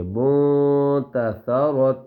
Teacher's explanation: اب یہاں آواز کو مکمل نامکمل چھپائیں گے ناک میں، ٹھیک ہے، یعنی ہلکا سا چھپائیں گے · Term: اخفا